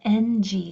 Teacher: So, it's like making an N sound, but the back of your to the back of your tongue is blocking off the air. So, the sound has to come through your nose. · So, the sound is made with the back of your tongue pressing up against the back of your throat and just having a very nasal sound come out. So, it's like making an N sound, but the back of your to the back of your tongue is blocking off the air. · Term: ng sound